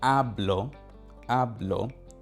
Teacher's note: the first syllable has the emphasis